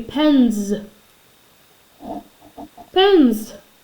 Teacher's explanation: the s for plural sounds like a Z